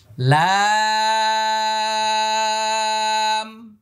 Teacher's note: এবার এটা লাম, শেষে মিম আসছে, ঠোঁট বন্ধ হয়ে যাবে। লা, 4 আলিফ টান, হ্যাঁ, 8 নম্বর মাখরাজ, লাম।